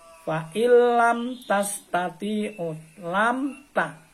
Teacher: lam mimnya mati ketemu dengan ta, harus dibaca jelas, fa illam ta. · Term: idhar syafawi